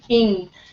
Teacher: It's on the velum, so we call it velar. It's a velar sound